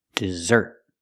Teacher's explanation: Put the stress on the second syllable. Dessert. I can talk about cake and ice cream and say dessert.